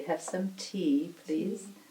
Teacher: English T is kind of in between has more air when it's in the beginning of a word and it is maybe more retroflex cerebral than dental kind of